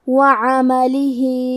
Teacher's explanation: آخری میں ہا کے نیچے کھڑی زیر ہے، یہاں حکم ہے مد صلہ صغرا، مطلب ہم اپنی آواز 2 مد کے برابر لمبی کریں گے